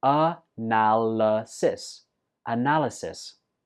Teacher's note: This word has 4 syllables, and notice that the 4th syllable is not pronounced I, it's pronounced a.